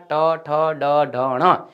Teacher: મૂર્ધન્ય એટલે કે મૂર્ધા મૂર્ધાને લગતા આ વ્યંજનો હતા